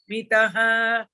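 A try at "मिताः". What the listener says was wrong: Mithaha. The tha mahaprana should be clearer.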